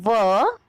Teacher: व का उच्चारण स्थान दांत और ओष्ठ को मिलाकर है। दंत ओष्ठ मतलब दांत और ओष्ठ दोनों समाहित है। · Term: दंतोष्ठ